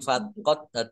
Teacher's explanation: dal sukun bacaan qalqalah dibaca memantul ditampakkan pantulannya